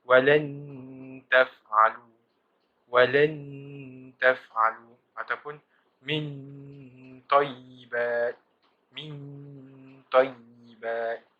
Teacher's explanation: Ifak a'la ialah apabila nun mati atau tanwin bertemu dengan 3 huruf, iaitu tal, ta, dal, ta. Oleh kerana mahrajnya yang terlalu hampir, maka bunyi ifak itu hampir kepada bunyi idgham. Ifak a'la ini disebut nipis.